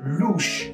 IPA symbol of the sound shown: luʃ